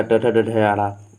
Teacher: मूर्धा में आप जाएंगे तो हो जाएगा ट ठ ड ढ आड़ा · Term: मूर्धा ध्वनियाँ